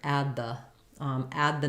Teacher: do the same thing where I'm stopping that d add the I'm just holding my ah sound longer so this one short this one a little bit longer add